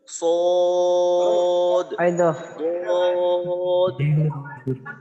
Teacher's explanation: সদ এবং দদের নামের শেষে কিন্তু একটু ধাক্কা দিতে হয়, যেটাকে কলকলা বলে। যেমন সদ, চার আলিফ টান শেষ হইলে যে একটা দ উচ্চারণ হয়, দাল উচ্চারণ হয়, ওইখানে একটু ধাক্কা দিয়ে পড়তে হয়।